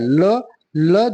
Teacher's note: ल ल जो है दंत इसका भी उच्चारण स्थान दंत ही होता है